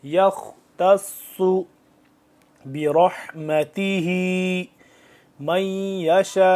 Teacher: تا کو ہم باریکی سے اور صاد کو موٹا کر کے